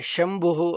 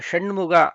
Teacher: ಶ ಅಂದ್ರೆ ಇದಕ್ಕೆ ತಾಲವ್ಯ ಶಕಾರ ಅಂತಾರೆ ಅಂದ್ರೆ ಶಂಭುಹು ಅಂತ ಏನು ಹೇಳ್ತಿವಿ ಶಂಭು ಈ ಶಬ್ದದಲ್ಲಿ ಉಪಯೋಗಿಸ್ತೀವಲ್ಲ ಶ ಅದನ್ನ ಮೊದಲು ಬಳಸಿಬಿಡ್ತೀವಿ ಆಮೇಲೆ ಶಣ್ಮುಗ ಅದಕ್ಕೆ ಮೂರ್ಧನ್ಯ ಶಕಾರ ಅಂತಾರೆ